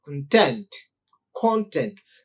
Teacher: So uh, if you look at the word content, if you stress the first syllable, it functions as a noun, content, or an adjective. But the same word, if you stress the second syllable ta, then that becomes a verb